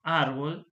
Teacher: si digo árbol, suena más fuerte la penúltima sílaba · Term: graves